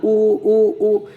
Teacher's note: उ ऊ ऊ तो लिप्स के सहारे से बोला जाता है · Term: ओष्ठ वर्ण